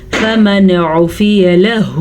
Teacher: ہم نون ساکن کو ظاہر کر کے پڑھیں گے اور بغیر غننے کے پڑھیں گے